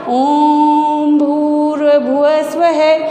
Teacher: जो ओम का उच्चारण हो रहा है ना, उसमें हमारे श्वास की मात्रा लघु की अपेक्षा 3 गुना लग रही है।